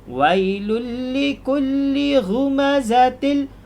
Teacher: idgham bilagunnah masuk tanpa dengung